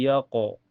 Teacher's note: Setelahnya ada hukum qalqalah sugro karena ada huruf qalqalah yaitu qaf berada di tengah kalimat. Kenapa disebut qalqalah sugro? Karena pantulannya kecil ya.